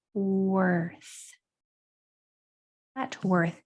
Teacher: This digraph, TH, makes a voiceless sound.